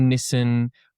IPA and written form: nɪsən (Nissan)